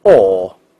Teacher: 英国人发这个哦这个发音，它是嘴唇要圆唇的，而且音位要朝后啊 ，不要忘记，音位朝后是英语的发音特点。无论▁British▁English▁or▁American▁English，▁那不论哪种▁accent，▁它一定都是朝后的。所以这个音呢，英国人叫哦。但美国人怎么读呢？你记住，美国人也有两种发音，我们称之为▁O▁的异化现象。但是更多的你会发现呢，会发音感觉这个嘴巴呢向上打开，嘴巴呢相对来说比较的大一点啊，它的发音的这种上下齿之间的距离会大一点，你看，而不是圆唇的▁O，▁而是怎么样上下打开啊啊，是这种感觉。那你会发现，我们通过句子来感受一下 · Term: 长元音